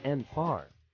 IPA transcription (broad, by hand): ˈɡʌnˌfaɪər